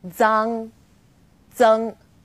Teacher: For example, Z as in zang or zeng. Its pronunciation is quite similar to the DS sound in English, like cards, but you need to move the tip of your tongue closer to the back of your teeth.